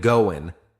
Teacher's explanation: in British English, you might hear gonna or even goin' without the G sound.